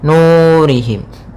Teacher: pada lafal nu yaitu ada bacaan mad tabi'i. Panjangnya 2 harakat yaitu ditandai dengan ada waw sukun didahului dengan huruf dhammah.